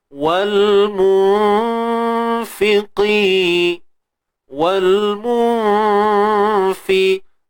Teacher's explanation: Sembunyi, jangan sebut nun tepat pada makhrajnya. · Huruf fa ni dia nipis, kan? Jadi dengung kita pun nipis juga. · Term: Ikhfa haqiqi, ikhfa haqiqi